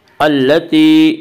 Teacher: التي یا مدہ یا مدہ وہ یا جو ساکن اس سے پہلے زیر ہو, یا مدہ کو ایک الف کے برابر کھینچ کر پڑھیں گے